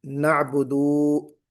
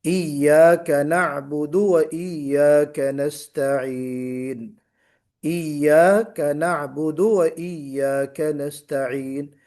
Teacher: دال کے بعد واو نہیں لگنا چاہیے